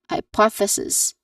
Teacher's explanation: it starts with a voiceless th sound because there's two versions of th sound